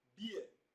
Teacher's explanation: beer a combination of the short vowel e and uh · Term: diphthong